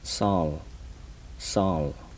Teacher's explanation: these are the alveolar fricative